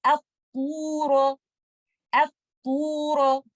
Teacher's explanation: In this case, we have to decide the vowel for Hamzatul Wasl, and because second letter is lam, we will put fatha on Hamzatul Wasl. But letter ta is an isti'ala letter, ittabaq letter, and we have to make our back of the tongue elevated. · make sure because of letter ta, you don't make your Hamzatul Wasl heavy. You don't say up, so you don't say a, and say at-tura.